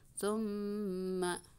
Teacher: Bi aidihim summa gunnah, mim bertasydid ditahan di hidung dua ketukan